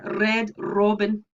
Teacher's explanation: the alveolar trill in some scottish english varieties